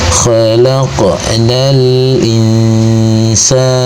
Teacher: Maka cara bacanya dibaca dengan samar disertai dengan dengungan, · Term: ikhfa hakiki